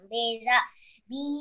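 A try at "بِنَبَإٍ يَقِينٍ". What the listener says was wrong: Di sini nak ya, bukan za ya. Binabah bukan bizabah. Runa ya, kalau za itu dia nggak terhubung dengan huruf berikutnya. Kalau terhubung berarti runa.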